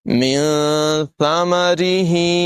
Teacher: سا جو ہے اس میں سیٹی کی آواز پیدا نہیں ہونے دیں گے